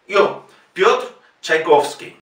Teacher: Piotr, Piotr, la yo es una letra en ruso, como una E con dos puntitos encima, y se pronuncia yo. Es una mezcla entre la I y la O, pero fusionada.